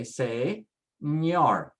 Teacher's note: Ending with a consonant, so just put the stress on the last syllable. Everything is on the last syllable now.